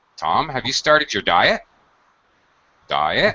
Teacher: The first question is a closed-ended question. Either the answer is yes, I did, or no, I didn't. So it will have a rising intonation.